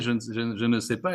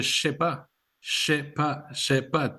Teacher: He's gonna say sais pas, 2 syllables instead of je ne sais pas, 4 syllables. And the je disappeared, and we got a sh. The ne disappeared, and we got nothing. And then the se becomes sh too with the je, and it's like saying I don't know.